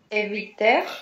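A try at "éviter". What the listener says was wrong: Еще больше улыбнись, эвите. Прям вот это э в конце, закрой его.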